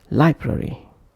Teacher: Br and re are not as stressed as lie.